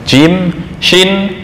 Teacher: Jim syin ya itu di tengah lidah Langsung nyambung artinya bertemu dengan langit-langit atas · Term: makhraj Jim